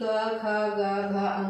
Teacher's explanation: ये कंठ भाग से निकलते हैं, इनका उच्चारण कहाँ से होता है, कंठ से निकलता है, इसलिए क्या कहा जाते हैं, कंठव्य व्यंजन कहा जाता है।